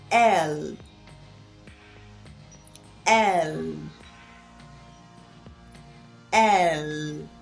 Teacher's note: pronouncing the letter L the mouth is is opened slightly then the tip of the tongue touches the upper gum to produce the L Sound